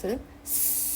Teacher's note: 윗잇몸의 혀끝을 다알랑말랑하게 만들어 놓고 그 사이로 공기를 싹 빼면 그게 스 소리가 나요. 그래서 마찰음은 소리의 통로를 좁혀서 그 사이로 공기가 삐져나가면서 마찰이 일어나는 소리인 거예요.